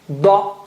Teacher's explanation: Dha with the right side of your tongue touching the right side of the gums